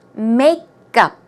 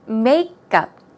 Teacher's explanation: the stress goes on the first syllable, so it's makeup. Now, notice, it's not makeup, it's makeup.